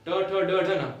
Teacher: आप इसको खुद प्रैक्टिस कीजिए, ट बोलो ट, जीभ मुड़ के ऊपर वाले भाग को टच करे, ट ठ ड ढ ना पूरा मुड़ के ऊपर वाले भाग को टच कर रहे हैं, तो उसको बोलते हैं मूर्धा।